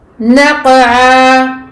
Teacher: Naqa'a, donc qaf mufakhama au milieu de deux lettres muraqqaqat, donc nun et l'ayn. Ici qaf mufakhama et muqalqala, donc qalqala sur le qaf.